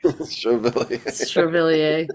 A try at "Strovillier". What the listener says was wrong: I feel like you need to pronounce the O more. Strovillier